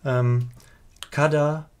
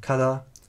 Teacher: where Old Avestan has a voiced stop between vowels in kada, Young Avestan has a fricative kada